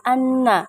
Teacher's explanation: kemudian yahsabu Anna Ma lahu akholadah hukum tajwidnya Ana itu hunnah karena ada huruf nun yang bertasydid cara membacanya mendengung yang disangatkan